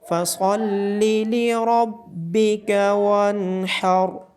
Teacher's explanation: صاد کو موٹا پڑھا جائے گا، را کی آواز موٹی آئے گی اور اس را کو بھی موٹا پڑھا جائے گا۔